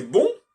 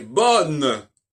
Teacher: Dans bonne, on n'entend pas le on. Il faut qu'au féminin, on n'entende pas le marqueur du masculin.